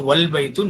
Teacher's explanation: the a is dropped and the phrase is pronounced wal baitu, not va al baitu.